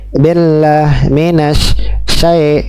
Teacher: membaca tanda baca kasrah pada huruf ba atau kasrah-kasrah yang lainnya dengan tidak sempurna atau lebih condong kepada huruf e.